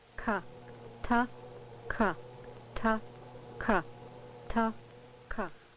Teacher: For example, the stop plosive sounds, T and K, are differentiated primarily by the fact that the tract obstruction on T is between the tongue and alveolar ridge, while for K, it is between the back of the tongue and the undersurface of the hard or soft palate.